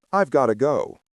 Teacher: Have is contracted to ve. Got to becomes the ubiquitous gotta. The entire idea of needing to leave is communicated in one swift, decisive sound unit.